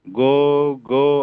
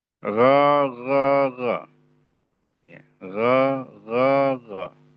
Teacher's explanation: pangkal lidah tadi itu ee sedikit menempel ya menempel di ee langit-langit yang berdaging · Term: bahasa Arabnya gho